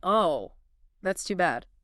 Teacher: A dropping pitch. Signals disappointment.